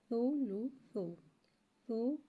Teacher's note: سا کو ایک الف یعنی 2 حرکات کے برابر کھینچ کے پڑھیں گے۔ سا میں سیٹی نہیں آئے گی، یہ نرمی والا حرف ہے، لہٰذا ہم بغیر سیٹی کے پڑھیں گے